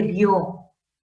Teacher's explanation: por naturaleza recae la fuerza de voz en la O, porque la vocal fuerte, la vocal abierta, ¿no? Sin necesidad de tilde, ahí vemos que la fuerza de voz recae en la O. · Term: diptongo